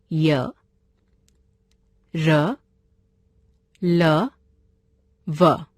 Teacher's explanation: अंतस्थ व्यंजन जिन वर्णों का उच्चारण स्वरों और व्यंजनों के मध्य का होता है वे अंतस्थ व्यंजन कहलाते हैं। इनका उच्चारण करते समय जीभ मुंह के किसी भाग को भी पूरी तरह स्पर्श नहीं करती। ये हैं य, र, ल, व।